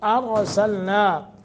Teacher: را تفخیم کریں گے، پر پڑھیں گے۔ سلنا، نا نون کے آگے الف ہے، 1 سیکنڈ کی مد کریں گے۔